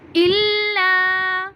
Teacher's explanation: الا کو بھی ہم ایک الف کے برابر لمبا کریں گے